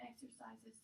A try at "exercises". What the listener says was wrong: It sounds like you're saying exercise is, like someone to exercise you. And also just make sure you're pronouncing the exercises.